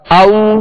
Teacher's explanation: واو لین کا قاعدہ ہے، اس کو بغیر کھینچے بغیر جھٹکا دیے نرمی کے ساتھ معروف پڑھیں گے